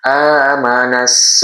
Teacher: Langsung disambungkan ke huruf sin. Jadi alif lam ini tidak dibaca. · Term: alif lam syamsiah